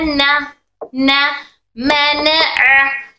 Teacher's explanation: नून हमारी जबान की नोक और ऊपर जबान के सामने वाला हिस्सा आता है, पूरा फुल टिप जबान की।